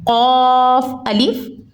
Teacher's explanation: قاف یہاں پہ حروف مستعلیہ میں سے ہے تو اس کو ہم نے پوری یعنی موٹا پڑھنا ہے